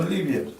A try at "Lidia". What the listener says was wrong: No, Lidia. Lidia, con D. Con D.